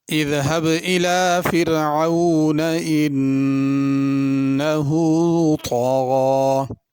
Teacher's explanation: فرعون کی را باریک ہوگی، انا پہ غنہ ہوگا۔ طغا میں طا ہے، تا نہیں پڑھنی، طا بھی پر کرنا ہے، غین بھی پر کرنی ہے، اور غین پہ کھڑی زبر ہے، اس کو الف کی طرح پڑھنا ہے۔